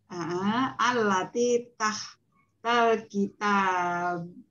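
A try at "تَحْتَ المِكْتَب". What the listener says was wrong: Tahtal bukan kitab, ini bukan kitab, tapi di sini ada mim. Tahtal.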